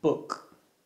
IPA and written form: bʊk (book)